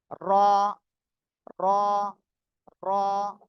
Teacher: জিহ্বার আগার পিঠ তার বরাবর উপরে তালুর সঙ্গে লাগিয়ে র মোটা আওয়াজে পড়তে হবে